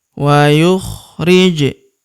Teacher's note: Wa, yukh, ri, je. Huruf je berharakat sukun kita pantulkan atau kita qolqolahkan